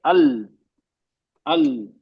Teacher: हमारा जबान की का किनारा है नोक समेत, इंक्लूडिंग द टिप, वो 8 दांतों के मसूड़ों पे लग रहा है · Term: मखरज लाम का